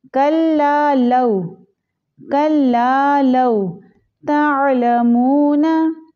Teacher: वाव लीन में से है तो लाम को नरमी से पढ़ेंगे, लंबा नहीं करना। कल्ला लौ नहीं पढ़ेंगे इसको।